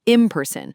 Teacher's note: Like in the phrase in person, the N is often pronounced as an M sound, imperson because the P in person is also made with the lips. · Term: assimilation